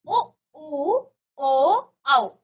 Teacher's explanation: होठों का आकार गोल हो जाता है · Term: वृताकार